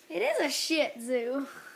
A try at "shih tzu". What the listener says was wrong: You're putting a little bit too much emphasis on the shih. Shih tzu.